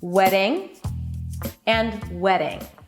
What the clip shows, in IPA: ˈweɾɪŋ